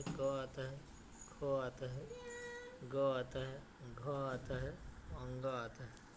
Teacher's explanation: क वर्ग का उच्चारण कहाँ से होता है? अगर ये पूछेगा तो कंठ से होता है।